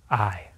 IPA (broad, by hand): aɪ